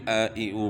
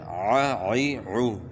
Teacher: یعنی عین کے بعد گلے کے درمیان سے نکالنی ہے · تھا کہ حمزہ اور عین میں آپ نے فرق کرنا ہے۔ اکثر لوگ جو ہے نا وہ عین کو نہیں پڑھتے ہیں، عین کے مخرج سے جو ہے نا عین کو نہیں ادا کرتے ہیں بلکہ حمزہ ہی پڑھتے ہیں اس کو ، تو اس کو بھی ا ای او پڑھتے ہیں، تو